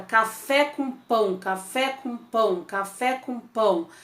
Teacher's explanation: esse P, que é uma letra oclusiva, e também o ão, que é um ditongo forte, aí um ditongo nasalizado, e aí quando você tem isso repetido várias vezes, você vai ter a percepção de que é um trem saindo da estação.